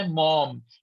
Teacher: پہلے آپ کے دونوں ہونٹ ملتے ہیں تو آپ انگریزی کا ایم کہتی ہے، پھر آپ دونوں ہونٹوں کو کھولتی ہے تو او نکلتا ہے، او، اور پھر آپ دوبارہ ان دونوں ہونٹوں کو ملاتی ہیں ایک اور ایم بنانے کے لیے، تب پورا بنتا ہے موم.